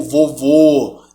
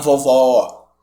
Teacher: o acento circunflexo, ele não marca um som necessariamente grave, ele marca um som fechado.